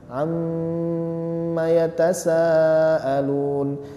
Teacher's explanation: Amma yatasaalun am ditahan Ya ditahan dan didengungkan